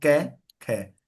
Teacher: सघोष वाले बोलोगे ग, तो गले में जो कंठ है उसमें कंपन हो रहा है, ग घ ड़, है ना। और कै खे में कोई कंपन नहीं है, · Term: अघोष